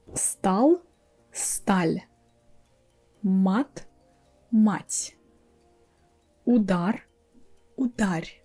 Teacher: even when I pronounce the whole word, not a separate sound, always the second word is softer, is a little bit higher, it's smoother. That's because we have this soft sign there, it makes the word softer.